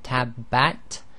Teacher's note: So when you say, for example, tabbat, there's a release of air at the end, and that's known as the hams